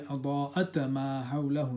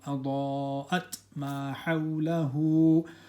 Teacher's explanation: The ta, we sound it but no qalqala.